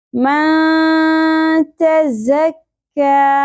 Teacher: नून साकिन पे इख्वा माल गुन्ना होगा, मा खींचना भी है, ठीक है, नाक में, और नून साकिन के आवाज को छुपाना है, मन नहीं पढ़ना।